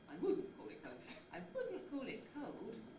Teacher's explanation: the pitch starts high but then falls gradually throughout the head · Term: falling head